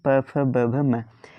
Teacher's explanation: प वर्ग का उच्चारण स्थान ओष्ठ से होता है।